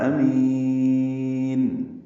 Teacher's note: حمزہ کو جلدی اور معروف پڑھنا ہے بالجہر، میم کو لمبا کرنا ہے